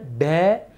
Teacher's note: ड एवं ढ व्यंजन का उच्चारण जीभ की नोक को उलट कर कठोर तालु को झटके के साथ कुछ दूर तक छूकर किया जाता है। इसलिए इन्हें उत्क्षिप्त व्यंजन या द्विस्पष्ट या ताड़न जात व्यंजन कहा जाता है।